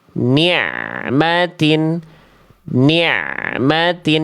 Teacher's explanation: Jadi bunyi ain sukunnya itu mengalir, bukan dipantulkan. Mengalir sedikit.